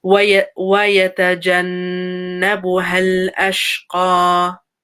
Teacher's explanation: So there's a noon with a shadda on it. So give it that length. Give it that gunna, the nasal sound.